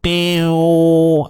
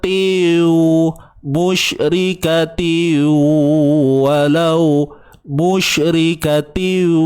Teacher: ada bunyi sengau kat hidung ni, maknanya betul lah tu. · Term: dengung